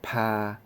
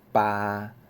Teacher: 拍伊有送气后壁即个巴无送气